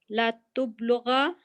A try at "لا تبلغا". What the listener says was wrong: نہیں تا پہ پیش نہیں آئے گی نا زبر ہے یہاں پر تو زبر ہی آئے گی. نہیں یہ دیکھیں یہ جو اوپر جو یہاں پر جو اس کا جو پیٹرن بنا ہوا ہے نا تا کے اوپر زبر ہے اور با ساکن ہے اور